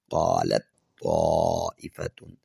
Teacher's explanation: تا کا قا میں مکمل طور پہ ادغام ہو جائے گا